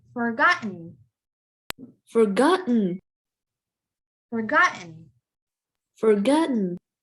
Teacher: That T becomes silent. You don't hear that T. It's kind of there, but it's not there.